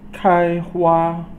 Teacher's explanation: 开 is first tone, and then 花 is first tone